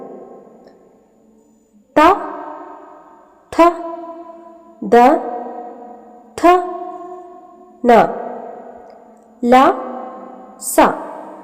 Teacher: ദന്തത്തിൽ വെച്ച് വായുപ്രവാഹത്തെ നിയന്ത്രിച്ച് ഉണ്ടാക്കുന്ന അക്ഷരങ്ങളെ ദന്ത്യം എന്നാണ് പറയുന്നത്